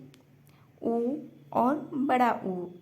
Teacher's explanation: ओष्ठ स्वर में उ और बड़ा ऊ इसका उच्चारण स्थान है